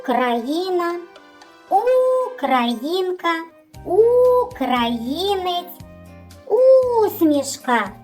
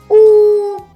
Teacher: губи витягнуті вперед вузенькою трубочкою повітря проходить вільно тому що в ротику немає ніяких перешкод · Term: звук у